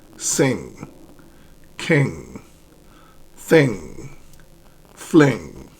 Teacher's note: it's the back of your tongue that touches the soft pallet and air goes through your nose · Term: nasal consonant, nasal